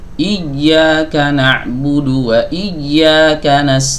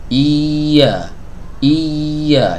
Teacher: huruf ya ini memiliki sifat rakhawah yang suaranya itu mengalir ya ingat semua huruf-huruf rakhawah itu suaranya mengalir harus dialirkan kadang